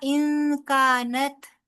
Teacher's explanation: ان کا نون ساکن کے بعد کاف آ رہا ہے، لہٰذا یہاں پر اخفا ہوگا